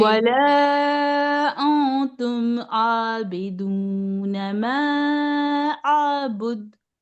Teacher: जबान को नून के मखरज तक यानी तालू तक लेकर जाइए, लेकिन टच नहीं करिए, और नाक में से गुन्ना की आवाज निकालिए, तो इख्फा अदा हो जाता है।